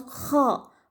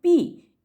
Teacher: kha is pronounced from inside the throat, and if we pronounce p, it is pronounced from our lips